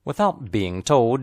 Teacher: the emphasized words are without and told remember that long words are stressed on only one syllable without